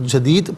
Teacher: دال ساکن ہوگا وقف کی صورت میں تو یہاں قلقلہ ہوگا، یعنی آواز لوٹتی ہوئی محسوس ہوگی